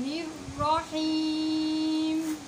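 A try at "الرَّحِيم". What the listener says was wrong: हीम ये गलत है। ही, इस ही को हमने नाक में नहीं पढ़ना है। आखिर में जो मीम आएगा उसको नाक में लेके जाना है।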